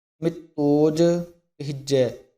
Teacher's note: ਇਸ ਦਾ ਜਿਹੜਾ ਅਰਥ ਹੈ ਅਮਿਤ, ਤੇ ਜਿਹੜਾ ਅੱਗੇ ਉੱਪਰ ਹੋੜਾ ਲੱਗਿਆ ਉਸ ਦਾ ਅਰਥ ਬਣੇਗਾ ਓਜ। ਇਸ ਲਈ ਇਸ ਨੂੰ ਇਕੱਠਾ ਬੋਲਣਾ ਮਿਤੋਜ, ਯਾਨੀ ਕਿ ਅਧਕ ਲਾ ਕੇ ਕੱਸ ਕੇ ਬੋਲਣਾ। ਮਿਤੋਜ ਕਹਿਜੈ, ਕਹਿਜੈ ਵੀ ਜਿਹੜਾ ਕੱਸ ਕੇ ਬੋਲਣਾ।